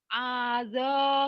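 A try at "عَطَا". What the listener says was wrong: Ini nggak ada titiknya.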